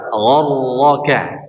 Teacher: Sifat takri atau getaran pada huruf ra disembunyikan ya. Disembunyikan sifat getarannya.